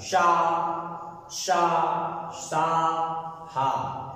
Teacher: आप लोग बोल के देख सकते हैं, हवा रगड़ खाएगी मुंह में आपके, वायु। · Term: ऊष्म व्यंजन